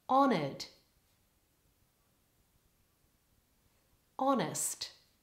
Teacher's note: check that you're not pronouncing the letter h in honored it's silent just like in the word honest · both of those words with me now getting good stress so focus on your pitch being slightly higher in the first syllable